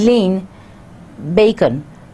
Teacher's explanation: n may be pronounced as M in lean bacon